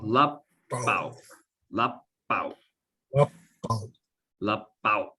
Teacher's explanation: And then you cut off the end of the word because it's a glottalized W, so it's like out, throwing it out.